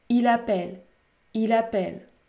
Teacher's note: Par exemple, dans « il l'appelle », j'ai lié les deux mots, j'ai enchaîné les deux mots, ce qui fait que la consonne L du premier mot est prononcée avec la voyelle A du deuxième mot. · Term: l'enchaînement